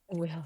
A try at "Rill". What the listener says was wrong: Not Will, Rill with an R.